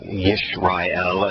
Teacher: with the sh following the y, you get a little harder sound from the y than you would if a vowel followed it